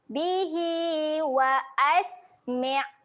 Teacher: Hi kita akan baca panjang sebanyak 2 harakat.